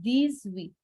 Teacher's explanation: the S will do a Z sound because liaison. It's followed by a vowel or a H.